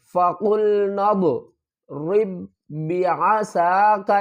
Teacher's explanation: قاف کو پر پڑھیں گے، لام کے ساتھ ملائیں گے اور نون کو ضاد کے ساتھ ملائیں گے۔